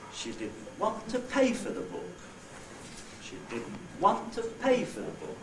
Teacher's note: Therefore, want in this utterance is the onset. Pay is the nucleus, that's the last accented syllable.